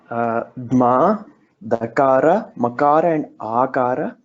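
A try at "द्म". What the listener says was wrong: This is not Dakara. If it were Dakara, you would have had the curve below, the loop, and then the changed Makara form, and then which is on the side.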